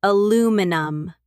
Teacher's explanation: And aluminum, American English. Stress on the second syllable. Aluminum. In British English, aluminium, with an extra I and 4 syllables.